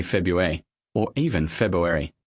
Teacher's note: The first R is often dropped entirely in casual American